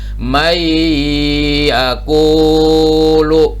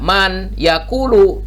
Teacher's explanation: Maka si nun ini tidak dibaca, tapi yang dibaca langsung iyanya. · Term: idgham bigunnah